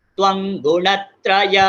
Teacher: बहुत लोग तीतः में मिस्टेक करते हैं, तीतः खींचना नहीं है